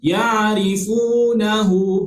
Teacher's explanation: Fa dan wa, huruf fa dengan huruf waw. Sebelum huruf wa ada huruf fa yang berbaris di hadapan, maka otomatik dia jadi mad asli, baca panjang dua harakat.